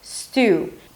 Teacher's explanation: The long U sound is a transitional sound, so you hear it forming up as you pronounce it. · Don't add any vowels at the beginning, not a student. No, start with a long S, move on to the T, and then it's a long U sound.